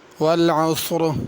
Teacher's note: اس کو پر کر کے صاد ہی پڑھنا ہے، سین نہیں پڑھنا، والعصر نہیں پڑھنا، والعصر، اور را کو پر پڑھنا ہے۔